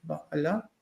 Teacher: And the ayin has a echo vowel